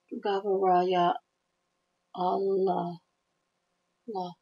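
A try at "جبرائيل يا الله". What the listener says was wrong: But I would say Gabrael, ya Allah. Gabrael, ya Allah. No, you just keep stuttering. You like add extra letters.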